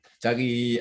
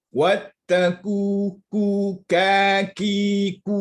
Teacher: Qaf bunyi tebal, kaf bunyi nipis. Sebab qaf ada sifat isti'la dan infitah.